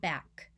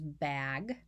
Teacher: and back the only challenge change i made in that was turning my voice off for the k and on for the g